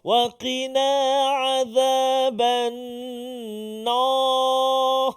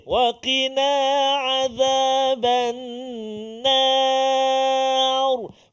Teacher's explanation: Menarik azaban nar ni iaitulah hujung ataupun di akhir ra tu baru tebal. Sebab apa? Sebelum dia balik atas.